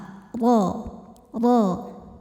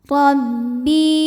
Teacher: Huruf ra dibunyikan secara tafkhim karena ra berharokat fathah. Cara bacanya tebal.